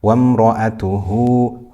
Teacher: We have dhamma followed by a waw. This is mad sila, stretched for 2 harakat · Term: mad sila sughra